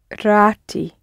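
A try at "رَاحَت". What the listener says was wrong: you're nearly there you're adding a bit of extra in the middle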